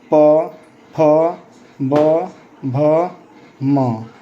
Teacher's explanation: ऐसे वर्ण को बोलने में आपका ओष्ठ अर्थात लिप दोनों सट जाते हैं। बगैर ओष्ठ को सटाए ऐसे वर्ण का उच्चारण हम नहीं कर सकते हैं। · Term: ओष्ठ वर्ण